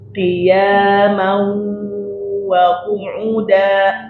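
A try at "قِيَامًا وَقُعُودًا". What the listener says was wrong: O-nya panjang. O-nya wa qu'uda.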